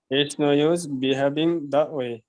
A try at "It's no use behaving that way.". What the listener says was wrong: Very good.